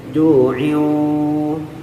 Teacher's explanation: Ada orang yang baca ju'iu, itu mah di mulut, harusnya ju'iu, terasa dengungnya di dalam hidung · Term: idgham bi gunnah